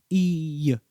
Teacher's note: They made a connection between the consonental Y sound and the subtle Y sound that occurs naturally at the end of the vowel E